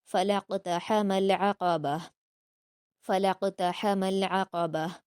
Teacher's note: یہاں پر دیکھیے قاف پر قلقلہ کریں گے